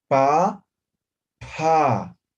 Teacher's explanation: la diferencia está entre la simple y la aspirada, que tenemos que hacer como soplando.